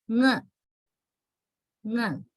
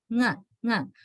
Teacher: You need to produce this using your back of the tongue touching the soft palate.